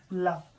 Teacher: ला तो इसका पार्श्विक होता है, तो इसे पार्श्व से होता है, मसूड़ों से, ठीक है, ला।